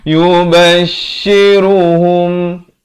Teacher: Yubashiruhum, idhar syafawi, jangan panjang, sempurna saja hum terus masuk.